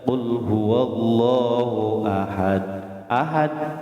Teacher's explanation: Jadi huruf kolkolah yang mati atau sukun di akhir itu ya, makanya harus ada pantulannya. Kolkolah itu membunyikan huruf dengan suara memantul, mantul lagi, qul huwallahu ahad gitu. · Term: kolkolah kubro